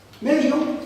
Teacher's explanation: una D fricativa porque no se encuentra en posición inicial absoluta del grupo fónico, no va precedida de nasal y no va precedida de la lateral L.